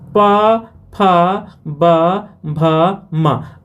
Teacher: प वर्ग का स्थान क्या ओट से है